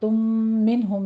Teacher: آنستم، سین کے آواز سیٹی کے ادا کیجیے، اور تم منہم میں میم ساکن کا قاعدہ ادغام شفی ہو رہا ہے، 2 کاؤنٹ کرنے ہیں یہاں پہ۔